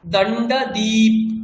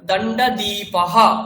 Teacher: প্রত্যেকটা শব্দের শেষে কিন্তু অকার রয়েছে, সে অকারগুলো প্রত্যেকটা উচ্চারণ কিন্তু করতেই হবে। একদম প্রথম থেকে দেখুন, দণ্ডদ্বীপ বলবেন না, দণ্ডদ্বীপঃ, দণ্ডদ্বীপ নয়, দণ্ডদ্বীপঃ।